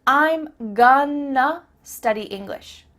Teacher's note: I'm gonna study English means I'm going to study English. That word to simply becomes a.